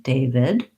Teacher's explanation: Sounds just like day and then vid with a relaxed I, first syllable stress